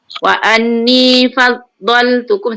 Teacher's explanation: Dha di kita punya lidah kan kiri kanan, sepanjang tepi lidah kanan atau kiri. Jadi bila kita sebut kan, kita perasan wa anni fal, kalau kita baca kita tak perasan kita guna hujung lidah kan.